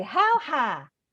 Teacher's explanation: in the South, things that we say with a diphthong, they say as a monophthong.